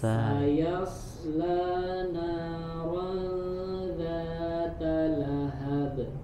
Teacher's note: Saya nya tipis dulu. Saya naron ikhfa, ada ziyadatul gunnah. Gunnahnya, dengungnya ditahan sedikit.